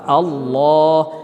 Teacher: আউযু বিল্লাহি, শুধুমাত্র আল্লাহ এই শব্দটা মোটা হবে। আল্লাহ এই লামের আগের শব্দটাতে যখন জবর হবে আর পেশ হবে তখন আল্লাহ শব্দটা হয় মোটা